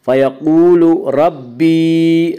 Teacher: فَيَقُولُ، واو مدہ، واو مدہ وہ واو جو ساکن ہو اس سے پہلے پیش ہو، واو مدہ کو 1 الف کے برابر کھینچ کر پڑھیں گے۔ فیقول ربی، ربی کی را کو پر پڑھا جائے گا۔ اس کا قاعدہ کہ را کے اوپر زبر پیش آئے تو را کو پر پڑھا جائے گا، را کے نیچے زیر آئے تو را کو باریک پڑھا جائے گا۔